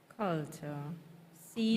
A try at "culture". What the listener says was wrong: Not cha. Not cha. Ta.